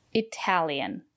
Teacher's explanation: The syllable after the letter T is stressed. We pronounce the letter T as T.